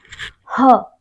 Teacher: ह अकेला ऐसा व्यंजन है जो महाप्राण भी है और सघोष भी है। आप जब ह बोलेंगे तो थोड़ा सा ह, प्राण वायु जब मुख से निकल रही है तो प्रेशर ज्यादा आ रहा है, ह, ठीक है।